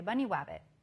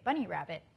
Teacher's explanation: the child's using a W sound for the R sound